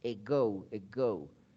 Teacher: Se escribe con A, pero su pronunciación es muy parecida a una E